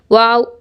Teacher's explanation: वाव दोनों होठों की गोलाई से अदा होता है